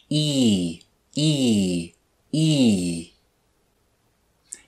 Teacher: start with the e sound with the tongue high in the back of our mouth